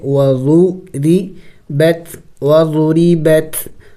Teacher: را کے نیچے زیر ہے تو را کو باریک پڑھیں گے